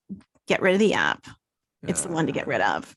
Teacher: the voiceover is the epitome of vocal fry millennial